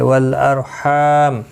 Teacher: را ساکن سے پہلے زبر ہے اس لیے پر پڑھا جائے گا، ہا الف مدہ ہے، ایک الف کی مقدار کے برابر کھینچ کر پڑھیں گے، اور یہاں پر وقف مطلق ہے، آپ رک سکتے ہیں، ملا کر بھی پڑھ سکتے ہیں، تو یہاں پر میم ساکن پڑھا جائے گا وقف کی صورت میں۔